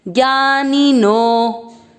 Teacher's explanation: ज्ञानी नो के बाद में अवग्रह यानी नो की मात्रा को आपको उच्चारण में अधिक समय देना है।